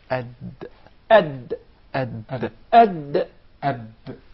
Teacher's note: The Dal is pronounced from the top side of the tip of the tongue and the gum line of the two front upper incisors.